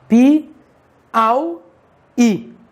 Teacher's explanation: O i, separado do a, é uma vogal separada de uma vogal. Consequentemente, temos um hiato. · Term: ditongo decrescente oral